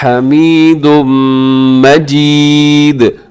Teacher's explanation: آخر میں دال کو آپ نے قلقلہ کرنا ہے